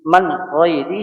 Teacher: یہ نون ساکین ہے، نون ساکین کے بعد حروف حلقی ہے غین، یہاں پہ اخفا نہیں کریں گے، اور یہ غین یا زبر غی، غین کے اوپر فتحہ ہے، زبر جس کو ہم کہتے ہیں، اور یا کے اوپر جزم ہے، تو یا لین ہے، تو اس لیے اس کو ہم جلدی پڑھیں گے نرمی کے ساتھ۔ من غیری، آ کھڑی سے ہی، من غیری ہی، ایک الف کے برابر ہی کو ہم کھینچیں گے۔